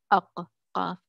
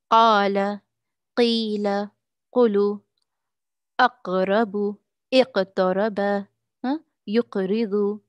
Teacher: The क़ाफ़ is produced or pronounced when the extreme back of the tongue touches the soft palate close to uvula। ये क़ाफ़ का मखरज पीछे है और काफ़ का मखरज क़ाफ़ के थोड़े से आगे है।